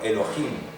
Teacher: Elohim se acentúa en la última.